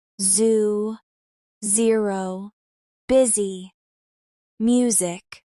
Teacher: Words like zoo, zero, busy, and music need your vocal cords to vibrate while your tongue is close to the roof of your mouth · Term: Z sounds